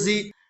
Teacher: حمزہ زبر آ، من آ، زال زیر زی، زال کے نیچے زیر کی حرکت ہے، زیر کو جلدی پڑھیں، تھوڑا بھی نہ کھینچیں